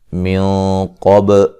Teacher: مد جائز ہے، من قب نون ساکن کا موٹا اخفا ہے، قاف کو موٹا ادا کریں گے